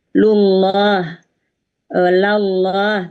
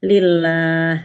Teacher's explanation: Ketika tafkhim lidah kita terangkat. Lullah, lallah. Tapi ketika tarkik, posisi lidah kita terhampar